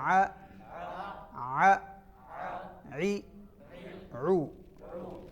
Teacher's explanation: ع وسط حلق کے درمیان سے